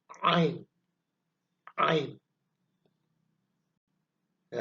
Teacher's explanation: penekanan ya ketika kita mengucap huruf Ain ya ain huruf a ada di tenggorokan bagian tengah masih dalam satu makhraj yang sama dengan huruf ha ya agak ditahan